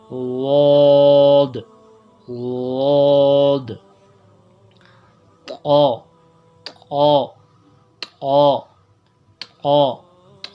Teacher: طا کو پر بھی پڑھنا ہے اور ہونٹ بھی گول نہیں کرنے